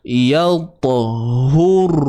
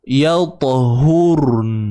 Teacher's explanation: dia macam sekali je, satu jalan je, sebab ra dengan nun makhraj dia dekat.